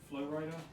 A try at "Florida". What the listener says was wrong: You're like Florida. It's two equal stresses.